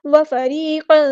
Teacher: را ہمارا باریک لیٹر ہے، باریک پڑھیں گے یہاں پہ را کو کیونکہ را کے نیچے زیر آئی